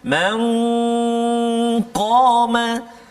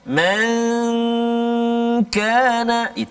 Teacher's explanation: Huruf qaf tebal, huruf kaf tak tebal. Jangan dua-dua sama bunyi dia, tak kan.